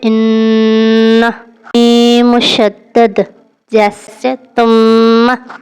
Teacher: غنہ کی آواز 2 حرکات تک ناک میں رہتی ہے۔